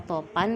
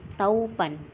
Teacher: kata topan menjadi taupan, dari bunyi o ke au